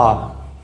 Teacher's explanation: हम कहते हैं बा, तो जब हम बा कहते हैं तो हमारे जो दोनों ओष्ठ हैं, दोनों होंठ हैं, वो आपस में मिल जाते हैं और वायु पूरी तरह अवरुद्ध हो जाती है